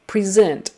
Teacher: the same way but you say it present um so you change the pre to a pre and put the accent on the second syllable